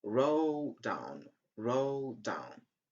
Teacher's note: We don't pronounce the sound d at the end of the first word.